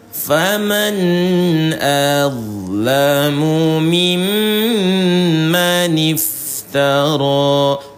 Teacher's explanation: Huruf mimnya ditahan dua harakat. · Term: ghunah